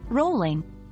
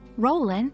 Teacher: Dropping the G at the end makes it sound more casual.